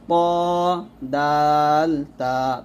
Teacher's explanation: জিহ্বার আগার সামনের উপরে 2 দাঁতের গোড়ার সঙ্গে লাগিয়ে 3টি হরফ উচ্চারিত হয়, প দাল তা, তটা মোটো হবে, প দাল তা।